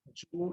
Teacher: the use of the voiced palato-alveolar sibilant affricate j instead of the palatal approximant y, as in you, which is pronounced ju instead of you.